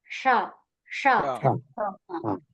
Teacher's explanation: సో ఇది ఉంటే ఎందుకు ఇది అవసరమైంది అంటే ఇక్కడ ఈ అక్షరాలు ఏవైతే బోర్డు మీద రాసినవి అక్షరాలు ఏవైతే రెడ్ కలర్ లో ఉన్నాయో ఆ అక్షరాలు సాకి పూర్వము ఉంటే ఈ సకారం అనేది మూర్ధన్యంగా మారుతుంది